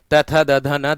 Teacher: और दंती है त थ द ध न, दांतों से बोले जाते हैं, मतलब दांतों का भाग लगता है